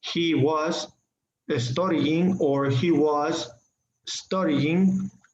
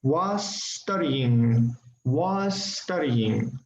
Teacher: So try to use the linking, try to use the liaison, was studying. So use the same S sound, all right, and no pause.